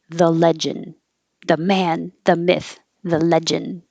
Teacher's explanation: you don't have to say the D if you just say the legend